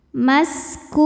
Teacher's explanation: Sin punya ciri khas sifat yaitu sofir, ada desis seperti suara ular. Maskub. Saat berhenti hukumnya adalah mad arid li sukun.